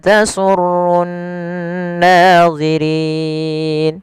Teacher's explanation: kemudian pada lafal rin rinnya dipanjangkan Di sini boleh dua harakat, boleh empat harakat, dan boleh pula enam harakat. Yang mana ini kita namakan dengan bacaan mad arid lisukun.